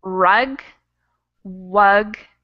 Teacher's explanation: until i open my mouth to make the u and wug the w sound is more made with your lips than your tongue